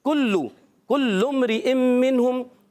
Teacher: काफ ज़बान की जड़ और तालुक के सख्त हिस्से से काफ अदा होता है